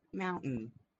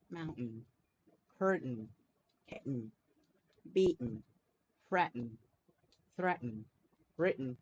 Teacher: this sound is produced when you stop the airflow in your glottis or vocal tract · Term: glottal stop